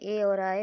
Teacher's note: कंठ तालव्य, जिसमें कंठ और ताल दोनों से टकराती है वायु